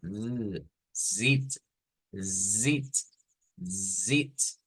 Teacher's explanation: fácilmente Como zit así pero vibrante esa esa Z verdad decíamos Esta es una s vibrante realmente nosotros la vemos como una Z escrita pero en el sonido no es una Z es una zit